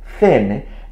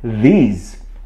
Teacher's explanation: The voiceless TH sound as in thin and the voiced TH sound as in these